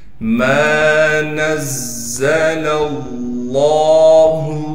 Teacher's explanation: اسی طریقے سے نون کو زا سے ملائیں گے، زا پر تشدید ہونے کی وجہ سے تھوڑا ٹھہراؤ کریں گے، پھر اس کے بعد لام کو ہم لام سے ملا دیں گے اس لیے کہ لام پر تشدید ہے، پھر لفظ اللہ کے لام پر تشدید کے بعد کڑا زبر ہے، لہٰذا اس کو ایک الف کی مقدار کھینچنا ہے۔ · میم کے بعد الف میں سے حروف مدہ ہے، لہٰذا میم کو ایک الف کی مقدار کھینچنا ہے